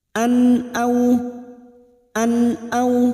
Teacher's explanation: fathah tanwin bertemu dengan Hamzah namanya bacaan idhar halq dibaca jelas tanpa mendengung